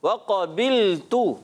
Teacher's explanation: वाव की अदायगी होंठों की गोलाई से होती है और वाव को खींचना नहीं है